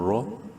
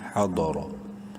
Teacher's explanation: را کو زبر کی وجہ سے منہ بھر کے پڑھنا ہے